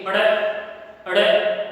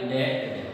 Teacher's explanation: लेकिन जैसे ही इनके नीचे नुक्ता चिन्ह लगा दिया जाता है, इसके बाद में इनका जो उच्चारण है वह अड़े अड़े होगा, यानी कि ए की ध्वनि सातवीं ओर जुड़ जाती है। यानी कि जब इनका उच्चारण करते हैं तो जीभ ऊपर की ओर फोल्ड होती है, घूमती है, और फिर झटके से बाहर आती है। झटके से बाहर ध्वनि आती है, यानी कि उत्क्षिप्त का अर्थ होता है फेंका हुआ।